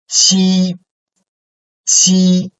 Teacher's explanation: we have stronger air or breath coming out through our mouth when we pronounce this sound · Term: aspirated